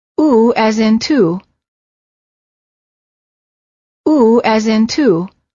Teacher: the lips are tense and rounded as if you're blowing a balloon and the tongue is slightly tense and raised High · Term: ooh sound